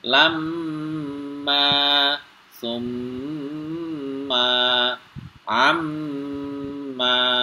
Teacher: ketika ada Nun bertasdid dan mim bertasdid maka cara membacanya suara Nun atau mim dibunyikan dengan mendengung dua harakat atau satu Ayunan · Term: ghunah musyaddah